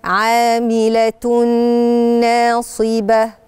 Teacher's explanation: فأنا دلوقتي ورايا نون، هنضغم الاتنين في بعض وهيبقى صوت الغنة واضح عشان يبين ان هنا فيه إضغام